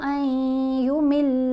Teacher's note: اب نون یہاں پر خاموش ہے، الف کو ہم نے یا سے ملانا ہے غنہ کرتے ہوئے